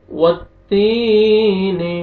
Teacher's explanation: वत्तीन वज़्ज़ैतून। वत्तीन वाव को ता शद्दा के साथ मिलाएंगे। या मद है, या साकिन से पहले, या जज़म से पहले ज़ेर है, ता को आपने खींचना है।